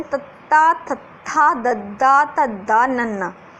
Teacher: ਦੰਤੀ ਦੇ ਵਿੱਚ ਜਿਹੜੀ ਆਪਣੀ ਜੀਭ ਹੈ, ਜੇ ਆਪਾਂ ਬੋਲ ਕੇ ਦੇਖਾਂਗੇ ਤੱਤਾ, ਤਾਂ ਇਹਦੇ ਨਾਲ ਜਿਹੜੀ ਆਪਣੀ ਜੀਭ ਹੈ ਉਹ ਦੰਦਾਂ, ਉੱਪਰਲੇ ਦੰਦਾਂ ਦੇ ਪਿਛਲੇ ਪਾਸੇ ਛੂੰਹਦੀ ਹੈ, ਠੀਕ ਹੈ। ਜੀਭ ਦਾ ਮੂਹਰਲਾ ਹਿੱਸਾ ਜਿਹੜਾ, ਠੀਕ ਹੈ, ਉਹ ਦੰਦਾਂ ਦੇ ਪਿਛਲੇ ਹਿੱਸੇ ਨੂੰ ਛੂੰਹਦਾ ਹੈ। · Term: ਦੰਤੀ ਵਿਅੰਜਨ